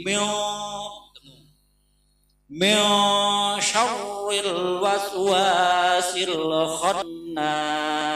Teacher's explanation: Jadi mim nun mati ketemu sya itu berarti ikhfa. Dibacanya harus dengung atau samar. Mio jangan bacanya min, berarti izhar kalau dibaca min.